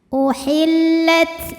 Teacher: ini ta jangan lupa untuk mengeluarkan angin di huruf ta ya. Kalau ta ini punya sifat namanya hams.